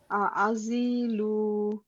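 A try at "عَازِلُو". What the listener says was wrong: আর জিতেও টান হবে, লুতেও টান হবে, আজিলু।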